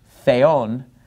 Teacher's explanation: the word for God Theon the accent is on the second syllable that's where the Mark is